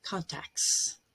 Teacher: Very often we drop the T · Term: elision